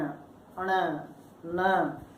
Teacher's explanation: तो हवा जो है वो नासिका से बाहर आती है, इसीलिए ये नासिक्य वर्ण कहलाते हैं।